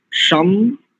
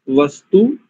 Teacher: शम में जो शकार है वो तालव्य है, और वस्तु में जो सकार है वो दंत्य है